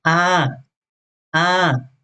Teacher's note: The falling tone or the second tone is a, a.